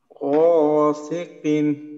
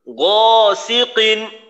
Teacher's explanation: বাংলা গ বর্ণের মতো যেন উচ্চারণ না হয় গ খুবই মোটা করার চেষ্টা করব